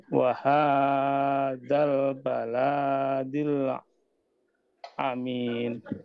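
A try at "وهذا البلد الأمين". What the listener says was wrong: Hati-hati huruf lam di sini tidak panjang, Pak ya, tetap pendek. Baladil ya.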